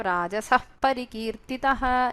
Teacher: You have a Ardha Visarga pronunciation. Because of the presence of Pakara, it is Upadhmaniya